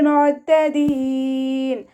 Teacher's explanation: ഐൻ ഖൽഖല letter അല്ലാത്തത് കൊണ്ട് half സുക്കൂന് കൊടുക്കുക. സൗണ്ടിനെ ക്ലിയർ ആക്കുകയും ചെയ്യുക.